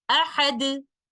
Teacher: That means I can stop with ishmam, and in order to do that, I will put a temporary sukoon on letter dal, and when letter dal is sakin, we recite it with the qalqala. So this is how we recite it when stopping with ishmam, ahad, and immediately after that, circle the two lips as shown in the picture to indicate the vowel of the last letter, but without the sound of dhamma.